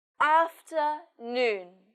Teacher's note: in this word the stress is on noon